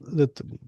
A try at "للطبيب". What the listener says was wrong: للطبيب what? You gotta say the last vowel. للطبيب.